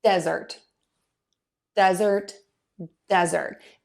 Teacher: I'm going to stress syllable one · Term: word stress